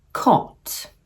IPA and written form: kɒt (cot)